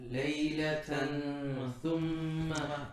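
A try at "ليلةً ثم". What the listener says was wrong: You actually closed your lips. You made meme. Why? First you said laylatam, your lips were closed. You were making meme.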